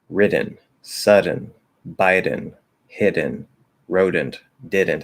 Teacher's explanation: because it's at the start of unstressed syllable and it's between two vowels that actually triggers the flap